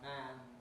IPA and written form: mæn (man)